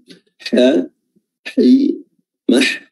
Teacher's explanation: Lauhin mahfuz, ya, ini huruf ha ini harus betul-betul tajam, ya. Huruf ha yang ada di sini keluarnya adalah makhrajnya adalah wasatul halqa, tenggorokan bagian tengah.